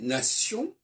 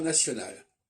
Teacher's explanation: En français, nation, il y a un on qu'on ne retrouve pas dans national. En anglais, on a nation, national.